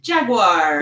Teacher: So you do a lot with the last vowel, but you don't do much with that second to last vowel, or you turn it into a W